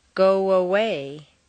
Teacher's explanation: when a word ending in a vowel sound is next to one beginning with a vowel sound they're connected with a Glide between the two vowels